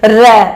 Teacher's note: लुंठित या परकंपित, यह हमारा एक वर्ण होता है, लुंठित या परकंपित, जिसके उच्चारण करने में र, जब हम र बोलते हैं, जो हमारी जिह्वा है वो झटके से ऊपर जाती है और फिर नीचे आती है